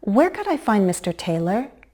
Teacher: we may use a fall rise to sound more polite, even if it's a WH question